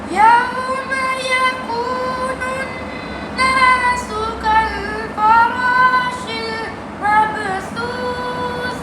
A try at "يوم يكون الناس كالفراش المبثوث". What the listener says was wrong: आपके सांस टूट जाते हैं।